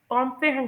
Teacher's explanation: हैंड बोलते हुए कैसे मेरी ड्यूरेशन लॉन्ग हो जाती है और मेरी जो पिच है वो भी स्ट्रांग हो जाती है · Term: स्ट्रेस्ड सेलेबल